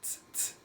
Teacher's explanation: right on the tip of your tongue, kind of a TS noise